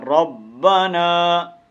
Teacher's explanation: ربنا ایک الف کے مطابق اس کو لمبا کر کے پڑھیں گے، کھینچیں گے. ربنا ربنا نہیں ہے، ربنا.